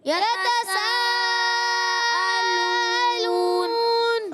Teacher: حمزہ کو تھوڑا واضح کر کے پڑھتے ہیں، تھوڑا سا ہلکا سا جھٹکا بھی آتا ہے، مگر وہ جھٹکا نہیں ہوتا جو حمزہ ساکنہ میں ہوتا ہے۔ سکون والے حمزہ میں زیادہ جھٹکا ہوتا ہے، اس میں کم ہوتا ہے مگر ہوگا، اس کو واضح کرنا ہے، ٹھیک ہے۔